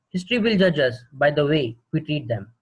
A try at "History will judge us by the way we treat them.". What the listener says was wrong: So what's happening is it was a fantastic attempt, but your intonation, like your modulation, is very cryptic. You know, it's zigzag, zigzag, zigzag, exactly same points up, exactly same points down. But for modulation, that is intonation, you need to work harder because you need to.